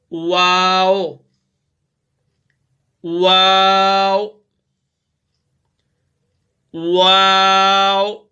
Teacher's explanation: आप जब वाव को अदा करेंगे तो आपके होंठ बिल्कुल गोल होंगे, जिसमें एक सुराख सा बच जाएगा। इसका जो मखरज है दोनों होंठों को गोल करके ना तमाम मिलाने से, यानी दोनों होंठ गोल तो होंगे मगर वो आपस में तमाम दोनों होंठ आपस में नहीं मिलेंगे, बीच में एक सुराख सा बचेगा।